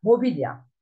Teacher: İlk hecede kalın ünlü var. İkinci hecede ince ünlü var. Üçüncü hecede kalın ünlü var. Büyük ünlü uyumuna uymaz.